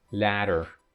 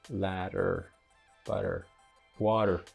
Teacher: T and D in English can be tapped or flapped